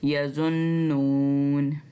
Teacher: ज़ौ को नून से गुन्ना करते हुए मिलाना है और एक अलिफ जितना लंबा खींचकर पढ़ना है